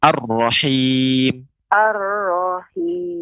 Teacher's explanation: pengucapan rahim lebih ditipiskan